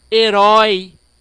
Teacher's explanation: um ditongo além de ser decrescente ele tem som aberto